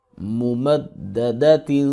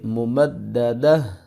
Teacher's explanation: تا دو زیر تین، ممددت. اور اگر یہاں پر ہم وقف کریں گے تو یہ جو تا ہے یہ ہا میں چینج ہو جائے گی، کنورٹ ہو جائے گی، تو ہم اس کو پڑھیں گے ممددہ.